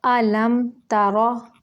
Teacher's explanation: حمزہ کو جھٹکے سے پڑھیں گے اور لم پہ غنہ نہیں کریں گے، لم نہیں کریں گے، لمبا نہیں کریں گے، بس ظاہر کریں گے میم کو۔ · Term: اظہار